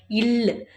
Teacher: இல் மேல்வாயை நாக்கின் ஓரங்கள் தடித்து தடவுவதால் பிறக்கிறது